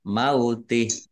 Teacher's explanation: dibaca wakof, haknya dibaca sukun dan dibaca pendek karena tidak ada tanda panjangnya